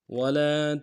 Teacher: ولا میں واو کو نمشہ ادا کریں گے، لام کے ساتھ الف مدہ ایک مقدار میں کھینچیں گے